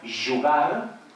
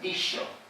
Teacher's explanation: la J tiene que ser sonora claramente, fricativa, y la X tiene que ser igualmente fricativa pero sorda